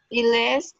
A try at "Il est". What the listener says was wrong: La S no suena. Ok, acuérdate que es nada más no pronunciar la última letra y también y que el acento es al final.